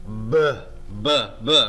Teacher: When you pronounce a consonant with your mouth, like the bet, your lips are coming together, b, b, b, right? And there's strong contact between the two lips to create that b